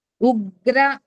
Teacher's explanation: ఉ తర్వాత ఇగ్ ని పట్టుకొని ఉగ్ర అని చదువుతాము. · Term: సంయుక్తాక్షరం